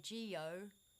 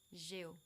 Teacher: So they kind of smush the E and the O together.